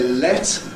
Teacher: you can hear that L is fairly clear